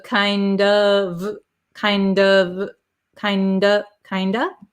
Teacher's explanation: the f which is a v sound disappears and we're left with this o vowel